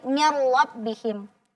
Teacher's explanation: huruf nunnya bertemu dengan ro maka kita cukup leburkan saja tanpa dipanjangkan gunahnya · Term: bilunah, bila gunnah